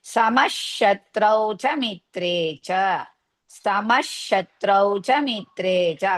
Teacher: to remove the visarga after sama and shatrau, the next letter is sha, so half sha